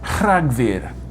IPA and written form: ˈr̥aɡvɨ̞r (Rhagfyr)